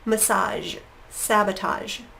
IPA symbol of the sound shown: ʒ